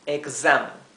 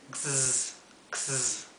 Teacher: Pero la X en inglés, en vez de pronunciarse X, se pronuncia la S esta, sería más bien una Z, porque es una vibración, como un zumbido de abeja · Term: S zumbada